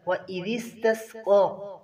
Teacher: ذال کو نرمی کے ساتھ قاف کو پر کریں گے۔